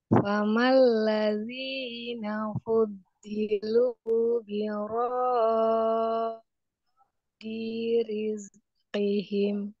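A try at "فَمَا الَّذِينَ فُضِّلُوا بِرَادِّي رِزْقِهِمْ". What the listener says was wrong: Nah, kurang syiddah Bu, apalagi dal dia sifatnya syiddah dan juga bertasdid ya. ditahan dulu harokat. Birod. Nah, ya, ditahan dulu. Rod di rizqihim.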